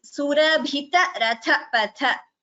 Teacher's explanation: So, Bhi is Mahaprana, Ratha Patha, Tha are Mahapranas.